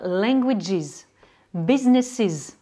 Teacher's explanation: le S ou le ES va se prononcer is